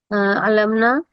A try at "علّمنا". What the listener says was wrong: علمنا، بس وہ شد، ہاں شد رہنی چاہیے ہر جگہ نا. علمنا، ٹھیک ہے. تشدید رہنی چاہیے ہر جگہ، صحیح ہے،